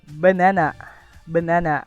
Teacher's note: Di sini dapat terlihat bahwa primary stress jatuh pada suku kata kedua ditandai dengan tanda apostrof di kata setelah kata ba.